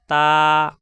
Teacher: মাখরাজ number 11। তা জিব্বার আগা উপরের দুই দাঁতের গোড়ায় লাগবে